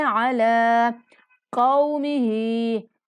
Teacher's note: کاف کے بعد واو لین ہے، کو کی آواز نہیں نکالیں گے